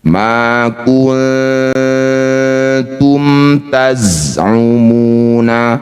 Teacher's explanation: Maka jadilah bacaan namanya izhar syafawi. Baca mim dengan jelas. Rapatkan bibir tidak usah dengung. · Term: idhar syafawi